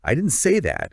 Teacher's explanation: If you stress the word say, it changes the entire meaning.